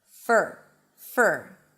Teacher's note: it's an f, a schwa sound, and an r. There is no o in the middle. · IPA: fər